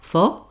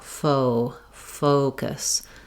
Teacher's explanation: when you're saying O, the jaw closes a little bit and the tongue raises a little bit as you say that O diphthong · letter O in American English is a diphthong, meaning it slides. One of the accent error patterns that often happens on this word is that people will be too short on this O. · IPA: /oʊ/